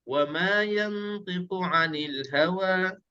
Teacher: Okey, perhatikan di sini ayat yang ketiga, dia tak ada wajibul ghunnah tapi dia ada dengung. Ada dengung di sini, nun mati bertemu dengan ta, ikhfa haqiqi ya. · Ada dengung sikit tapi tak cukup dua harakat. Dia akan nampak terang.